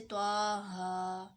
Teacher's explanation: اس کو بہت لمبا نہیں کرنا، صرف 1 الف کے برابر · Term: کھڑی زبر